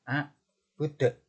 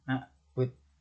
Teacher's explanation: huruf dal ketika di akhir ayat atau dibaca ketika waqaf, sehingga kita baca dengan cara memantul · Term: qalqalah